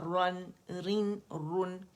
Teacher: را ضمتین رن، آواز گول کریں گے را کے لیے، پھر نون سے ملے گی